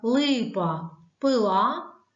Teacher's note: у словах Липа пила всі приголосні також тверді